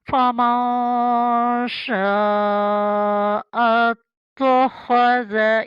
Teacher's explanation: فَمَن شَاءَ اتَّخَذَ، خا ذا دونوں کا دھیان رکھیں، ہا کی گلے کی شروع سے نکالیں اور ذال کی دفعہ زبان اوپر والے دانتوں کے کنارے پہ لگائیں